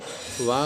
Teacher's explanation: वा का उच्चारण स्थान है, तो वकारस्य दंतोष्ठम, हमने एक सूत्र बताया है कि वा का उच्चारण स्थान दांत, दंत और ओष्ठ, इन दोनों की सहायता से किया जाता है, तो दंतोष्ठ होगा।